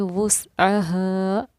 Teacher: हा सीने से पढ़ी जाने वाली हा है, ये दो चश्मी, इसको हा करके हमें वुस्अहा इस तरह हमें इसको ज़ाहिर करना है, प्लस हुरूफ़ मद्दा की अदायगी भी करनी है।